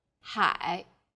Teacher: syllable is made of an initial and a final i and a third falling then rising tone